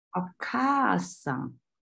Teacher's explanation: 二调音，也就是说它的重音是在第二个假名上